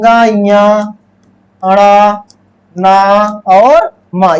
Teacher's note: जो पांचवा वर्ण होता है ङ ञ ण न और म ये क्या होता है नासिक्य होता है ये क्या होता है ये नासिक्य व्यंजन होता है इसीलिए इसे पांचवा अक्षर कहते हैं।